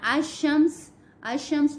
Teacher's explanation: لام خالی تھا، ہم نے چھوڑ دیا، الف کو ہم نے شین سے ملایا